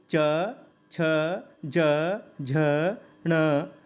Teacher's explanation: अब आप महसूस करेंगे कि जो ध्वनि निकल रही है वो तालु से निकल रही है। तो ये आता है तालव्य में।